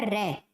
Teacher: रे को बोलेंगे ना तो कंपन हो रहा है।